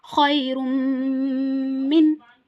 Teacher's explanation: So it's the rule of idgham ma'al ghunna or idgham naqis. So here we have to merge ra tanween with mim. Merging is idgham.